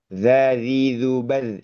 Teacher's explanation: huruf sa dan zal itu dua-duanya yaitu tadi menggigit ujung lidah itu ke gigi jari atas. Itu versi tipisnya